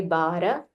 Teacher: No need of a mahaprana. It's not a mahaprana. So just say bara.